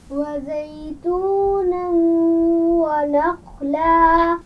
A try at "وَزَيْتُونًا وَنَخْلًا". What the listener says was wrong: یہ زا ہے، اس میں سیٹی ہونی چاہیے. وزیتونا، پھر پڑھیے.